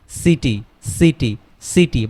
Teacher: সিটি সিটি যখন আমরা উচ্চারণ করব তখন দন্ত স আসবে, দন্তর স আসবে।